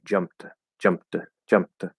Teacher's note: being a t sound because of the p in faster speech we might actually just completely skip the p and use the voice of the m to make it d